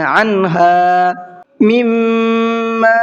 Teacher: میم پر تشدید ہے، غنہ کریں گے